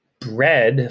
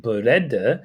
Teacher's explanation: a korean person might pronounce english words such as bread like beretta because in the korean language they don't have those clusters and final consonants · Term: adding an extra vowel